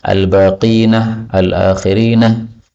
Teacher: baqin, akhirin dan sebagainya seperti biasa boleh ditambahi ha menjadi al-baqinah, al-akhirinah, itu disebut sebagai ha sakat